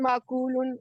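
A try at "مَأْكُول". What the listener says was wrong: आकला याकुलु कुल आकिलुन माकुलुन और अक्लुन। अच्छा इसमें हमजा पे झटका भी है, ठीक है, माकुल।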